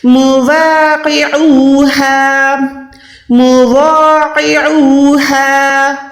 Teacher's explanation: قوف موٹا، عین حلق کے درمیان سے، ہا حلق کے نیچے والے حصے سے